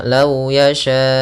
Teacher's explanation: Lau yasyaullah panjangkan empat harakat baru baca u-nya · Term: mad wajib muttasil